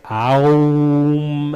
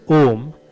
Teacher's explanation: if you really stretch it out, you can hear it's not a diphthong, it's a single phoneme, but it can break down into you can hear that breakdown if you really stretch it out, but that can be distracting.